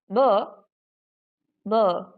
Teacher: This vocal folds are vibrating, right? And you can feel the vibration. And that's why the sound B, it's voiced